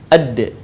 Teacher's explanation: Huruf da keluar dengan cara menyentuhkan ujung lidah kita ke gusi bagian atas sebagaimana kita melafalkan huruf ta. Dalam keadaan mati, huruf da terdengar suaranya memantul.